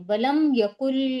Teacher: अब काफ के ऊपर पेश है और फ के भी ऊपर भी पेश है। तो हम इन दोनों को जल्दी पढ़ेंगे। बिल्कुल नहीं खींचेंगे।